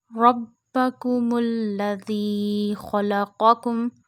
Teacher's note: When ra has a fatha or zamma on it, we read ra with a thick voice.